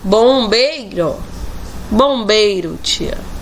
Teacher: Vemos que o I está com entonação fraca em relação ao E. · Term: semivogal